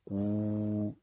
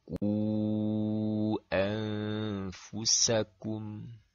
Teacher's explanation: Adapun ketika seseorang membaca waw mad, seperti contoh, ku, maka bagian pangkal lidah terangkat saat melafalkannya disertai bibir yang dimonyongkan